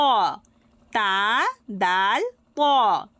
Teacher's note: জিহববার আগা সামনের উপরের দুই দাতের গোড়ার সাথে লাগিয়ে উচ্চারিত হবে তা দাল